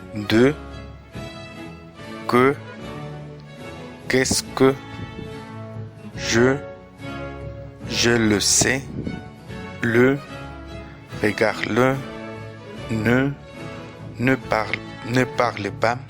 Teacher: La E est arrondie.